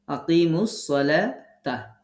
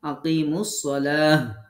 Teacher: তবে যখন শব্দের শেষে গোলতা হবে অক্ফের সময় তাকে হা সাকিন পড়তে হবে। যে কোনো কন্ডিশন, যে কোনো অবস্থায়, যে কোনো হরকত থাক না কেন তাকে গোলতাকে হা সাকিন করে পড়তে হবে।